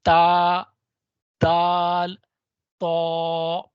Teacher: फिर इसी तरह से एक कैटेगरी उसका नाम है हरूफ नितिया। यह जुबान की नोक और ऊपर के दांतों की जड़ से अटैच होती है।